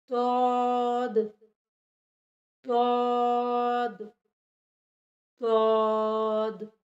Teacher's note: तौद हमारी ज़बान की करवट और ऊपर के दाढ़ों की जड़ से अदा होता है